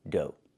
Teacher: Make the long O like no and go, and the GH is silent.